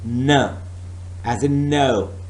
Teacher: The velum, the soft palate starts working and does not allow the air to go to mouth tract. No, that route is stopped and blocked, but the air is allowed to go to nasal cavity and outside, and through the nostrils we are producing n sound, since it is a nasal sound.